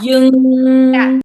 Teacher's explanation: it's actually all coming from your nose, guys. So you should feel your nose is like vibrating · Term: ing sound